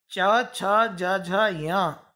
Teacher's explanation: इनका उच्चारण स्थान तालु है, इसलिए ये सभी वर्ण कहलाएंगे तालव्य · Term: तालव्य वर्ण